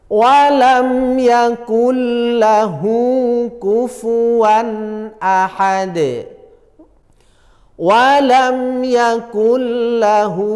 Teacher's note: kalau ada mim sukun bertemu huruf selain mim dan ba maka harus dibaca izhar syafawi tidak boleh dengung